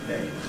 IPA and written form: neɪm (name)